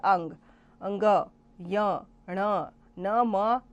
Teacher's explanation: इसलिए इन्हें दंतोष्ठ बोला जाता है। और अंग अंग य ण न म नासिका से बोले जाते हैं। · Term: नासक्य